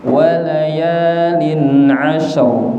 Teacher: Shin niku huruf hamas dan punya sifat tafasyi. Makanya dia desis dulu.